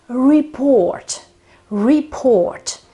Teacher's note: it doesn't matter whether it is a noun so the report or a verb so to report but the accent is always on on the second syllable so it's always on the o in Italian many people say